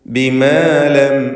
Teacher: സാക്കിനത്തായ മീം ഇൽഹാർ ഷഫവി മണിക്കാതെ വെളിവാക്കുക.